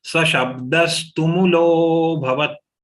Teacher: Only lo is long and lo has avagra, so it has to be further pronounced long.